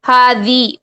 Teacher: دال کی زیر جو ہے اس کو زے نہیں کرنا ہے، اگر آپ زے کرتے ہیں تو کیا ہوگا؟ مجہول ہو جائے گا، ہاذہ، بہت زیادہ کامن مسٹیک ہے یہ، ہاذہ، زے، دال کی جو زیر ہے اس کو کیا کرتے ہیں؟